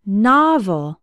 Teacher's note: Novel has two syllables, and the stress is on the first one.